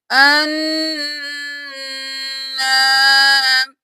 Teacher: نون پر تشدید ہے غنہ کریں گے، الف کی وجہ سے ایک الف کے برابر کھینچیں گے